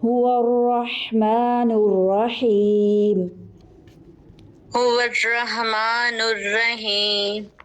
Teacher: یہ جو ہا ہوتا ہے تھوڑا سا اوپر سے وسط الحلق درمیان والے حلق سے نکلتا ہے ہا, اور یہ باریک بھی ہوتا ہے. دونوں ہا آ رہے ہیں, آپ نے ڈفرینشیٹ کرنے کی کوشش کرنی ہے.